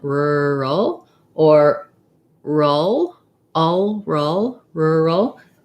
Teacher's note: it's an er sound starting with an r and then my dark l